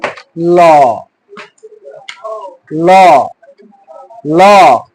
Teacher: এই ল ধ্বনিটা উচ্চারণ করার সময় জিহ্বাটা মুখের মাঝামাঝি জায়গায় অবস্থান করে এবং ফুসফুসতাড়িত বাতাসটা জিহ্বার চতুর্পাশ দিয়ে বের হয়, চতুর্পাশ দিয়ে বের হওয়ার সুযোগ থাকে, আর ঠোঁটটা সামান্য গোলাকৃতি ধারণ করে। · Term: পার্শ্বিক ধ্বনি